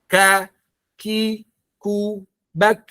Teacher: Ya kalau kaf, dia dari segi hamas, udara mengalir. Nanti K itu ketika dalam kondisi hidup ataupun dalam kondisi sukun tetap mengalirkan udara.